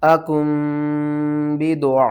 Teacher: नून साकिन और तनवीन की आवाज़ को मीम की आवाज़ में बदल कर पढ़ते हैं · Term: इकलाब